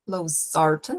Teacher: o estresse está ali na segunda sílaba da palavrinha